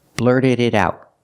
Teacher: The D in blurted is a fast D. What about the T in out? Well, it's the end of the sentence, so it's a stop T. Blurted it out.